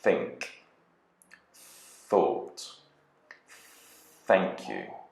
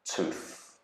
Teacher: the tongue actually goes between the upper and lower teeth to produce the sound